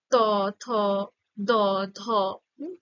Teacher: যখন তুমি উচ্চারণ করছো তখন দেখো জীবটা দাঁতে গিয়ে স্পর্শ করছে বা দাঁতের গোড়া ওই দন্ত মূলে গিয়েও স্পর্শ করছে অর্থাৎ এই